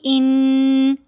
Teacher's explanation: 2 count, तकरीबन 2 second हम आवाज़ को नाक में होल्ड करेंगे तो आवाज़ बनेगी इन। ये गुन्ना है।